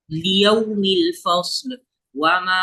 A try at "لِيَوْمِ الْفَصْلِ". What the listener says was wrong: फस्ल में लाम पे कलकला नहीं होगा। लियौमिल फस्ल। फस्ल नहीं, फस्ल। लियौमिल फस्ल। फस्ल। अपनी टंग को वहां से हटाना मत, तालू से।